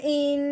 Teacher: اس کے بعد نون کے اوپر 3 دندوں والی شد آنے کی وجہ سے نون مشدد ہو گیا۔ اب ہم نے حمزہ کو نون مشدد کے ساتھ ملانا ہے اور ساتھ ساتھ ایک الف کے برابر لمبا غنہ کرنا ہے، کیونکہ نون اور میم مشدد پہ ہمیشہ غنہ کیا جاتا ہے۔